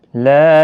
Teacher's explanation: لا الف مدہ ہے، ایک الف کی مقدار کے برابر کھینچ کر پڑھیں گے۔